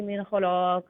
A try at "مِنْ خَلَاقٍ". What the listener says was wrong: خلاق لام فل موت نہیں ہے, خلاق